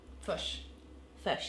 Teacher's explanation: the short I sound is the most different between the New Zealander and the Australian accents because yours sounds like our schwa. So it's not quite an as in up.